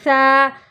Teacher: الف مدہ کو ایک الف کے برابر ہم کھینچ کر پڑھیں گے